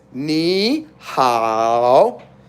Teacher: So you're technically doing 2nd tone and 3rd tone. But generally, ni is ni.